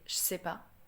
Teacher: we remove the ne, then we just remove the e from je